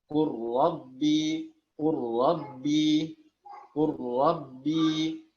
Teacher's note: jadi lamnya tidak dibaca lagi karena sudah mengalami idgham kamil